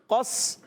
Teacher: ٹھیک ہے، قاف کو سین سے ملائیں گے. قاف کا مخرج زبان کی جڑ اور تالو کا نرم حصہ، یہ قاف کا مخرج ہے · قاف موٹا سین باریک